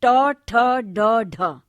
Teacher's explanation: जीवा की नोक इसमें प्रायः उलटकर मूर्धा का स्पर्श करती है। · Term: मूर्धन्य ध्वनियां